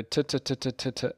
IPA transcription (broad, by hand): tə tə tə